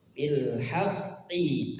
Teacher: ada qaf bertasydid, ditekan